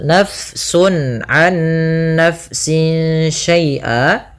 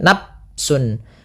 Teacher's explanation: fa-nya dialirkan karena fa memiliki salah satu sifat yaitu sifat hamas, yang dimana dia jaroya nun nafas, harus mengalir nafas kita di dalam melafalkannya. Ya, kesalahan yang sering terjadi juga di dalam membacanya, dia tidak mengalirkan nafas, misalnya nafsun, ini dengan diganti dengan p, padahal dia bukan.